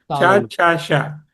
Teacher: చ ఛ అన్నప్పుడు ముందు భాగంలో ఉన్నటువంటి ప్యాలెట్కి తగులుతుంది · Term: తాళవ్యములు